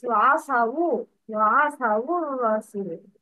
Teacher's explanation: Dhamma is added instead of sukun.